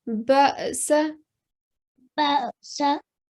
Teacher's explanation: But what you want to do is give a soft jerking sound, so don't be too hard on the alif